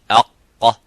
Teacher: you can see how the sound is cut. There is no air coming out, and it's a full mouth. It's not an empty mouth. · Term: qaf